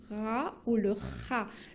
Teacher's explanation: Le ra, c'est au fond de votre gorge.